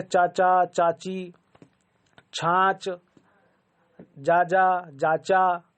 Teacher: यह सब तमाम चीजें यह सब कहां से निकलती है तालू से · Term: च वर्ग